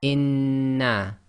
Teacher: However, we are going to do this gemination, which means we've got to effectively merge the two noons together and hold it for a little bit. So we're going to pronounce this as inna.